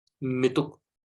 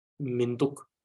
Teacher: But what happens is when we say Mituk, the sound is very, the transition is not smooth. It's as if there is like a gap between mi and tuk, Mituk. So to make it more, to make the transition more smoother, Minduk.